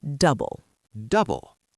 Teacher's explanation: The stress is on the first syllable, double.